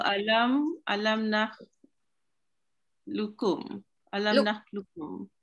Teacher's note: Tak ada bunyi qaf tu luqu. Kalau qaf dia nakhluqu, luqukum, luqu ada qalqalah, ada melengkung lidah. So yang ni just flat je, nakhluqkum.